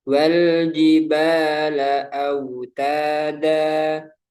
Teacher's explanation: Tapi ketika waqaf maka dibaca mat dua harokat. Kenapa? Karena ada huruf yang berharokat fathatain kemudian bertemu alif.